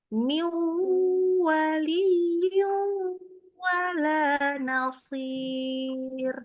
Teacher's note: Jadi benar-benar waktu nun ketemu wau itu ditekan ke hidung.